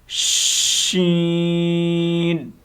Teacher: شین لفظ شین کو جب ہم نے پڑھنا ہے، ادا کرنا ہے، تو اس کی سیٹی منہ کے اندر پھیل جاتی ہے